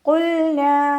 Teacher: ഖാഫ് ഇസ്തിഅലാൻ്റെ ലെറ്ററാണ്, തഫ്ഹീം ചെയ്തിട്ട് ഉച്ചരിക്കുക. ലാമ് കൽക്കലയുടെ ലെറ്ററിലാത്തത് കൊണ്ട് ഹാഫ് സുക്കൂന് കൊടുക്കുക.